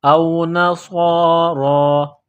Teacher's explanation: را کے اوپر کڑا زبر ہے، ایک الف کے لمٹ میں کھینچنا ہے، را کو موٹا کرنا ہے